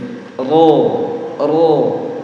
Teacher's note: yang paling benar ro adalah ujung lidah ya digetarkan dengan gusi